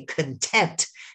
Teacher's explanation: You emphasize the second syllable.